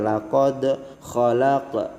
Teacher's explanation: karena qalqalah sugro itu qalqalahnya kecil, pantulannya sedikit aja